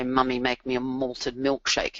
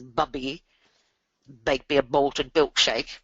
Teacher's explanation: they're nasals because of the air going through the nose.